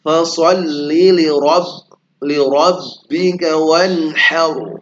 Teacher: artinya menebal tuh lidahnya dinaikkan supaya menebal ya, dia tafkhim, ra tafkhim